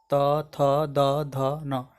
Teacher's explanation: अब त वर्ग, इसका उच्चारण दंत से होता है, त थ, देखिए जी इसमें दांत में सटेगा, त थ द ध न।